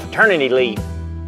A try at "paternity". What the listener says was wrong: I'm pretty sure you're getting your P's and your F's mixed up on the paternity, fraternity.